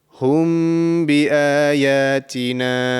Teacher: there's a small nasal sound that is produced when the mim sakina comes, and when the mim sakin comes, there will be a ba straight after this. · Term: Ikhfa mim sakin